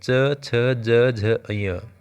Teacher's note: इनको बोलते वक्त हमारी जीभ ऊपर तालू से लग रही है